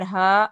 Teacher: ہا الف زبر ہا. الف سے پہلے زبر ہے، الف مدہ ہوگا، ایک الف کے برابر کھینچ کر پڑھے